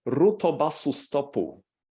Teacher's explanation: he was inserting vowels after the final consonants to break up the syllables and to make them open syllables · If you want to simplify your task, that's the last item here, epenthesis. That is the insertion of a tiny vowel, imagine a schwa, in between the consonants to break up the cluster